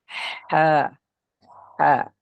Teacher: bahagian tengah tekak kita akan dapati 2 huruf juga, huruf ain dengan huruf ha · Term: ha pedas